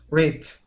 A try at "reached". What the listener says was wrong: Okay, so you're stopping on the CH. Okay, give me a hard T sound. Reached.